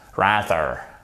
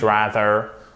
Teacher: Vous avez l'accent tonique qui est sur la première syllabe.